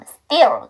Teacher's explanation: still이 맞는데 s 사운드 뒤에 무성음 t니까 쌍잠